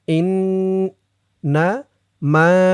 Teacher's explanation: ইন ওয়াজিব গুন্না, হরকতের পরে নুনের উপরে তাসদিদ